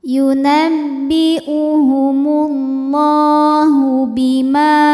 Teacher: Ma hukumnya adalah mad tabi'i zahiri, sebab ada alif yang sebelumnya berbaris fathah, maka huruf mim panjang 2 harokat. Bima ka dihukumi dengan mad tabi'i zahiri, sebab ada alif yang sebelumnya berbaris fathah, maka huruf kaf panjang 2 harokat.